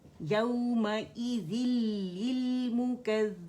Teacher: नून की पूरी आवाज़ जो है लाम में चली जाएगी, गुन्ना नहीं सुनाई देगा। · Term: इदगाम ताम बिला गुन्ना